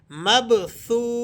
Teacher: سا واو پیش سو، واو مدہ ہے، دو حرکتوں جتنا آپ اسے کھینچ کر پڑھیں گے۔